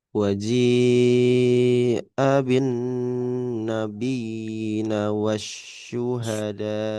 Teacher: Karena ini mat tabi'i. Dalnya itu dibaca 2 harakat seharusnya. Akan tetapi bertemu dengan hamzah maka dia jadinya mat wajib Fasil.